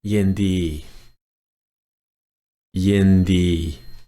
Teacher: Yindi, all flat tone.